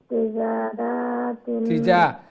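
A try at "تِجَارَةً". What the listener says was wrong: জিমের পরে আলিফ আছে, রার পরে আলিফ নাই, রা শর্ট হবে। তিজারাতান, তিজারাতান,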